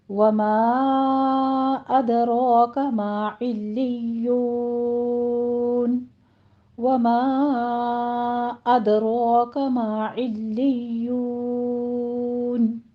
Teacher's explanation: ادراک میں دال پر قلقلہ کریں گے، را کے اوپر فتحہ قائمہ ہے اور را مفخم پڑی جائے گی